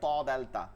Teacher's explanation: জিহ্বার আগা সামনের উপরের দুই দাঁতের গোড়ার সঙ্গে লাগায়